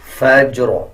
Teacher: اسی طرح آگے دیکھیں جیم کے اوپر بھی جزم ہے, فجر, قلقلے کے ساتھ جیم کو ادا کیا جائے گا